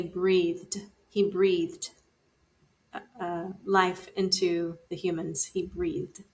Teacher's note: Going back up to the voiced consonants, the voiced th sounds as it does in the word breathe.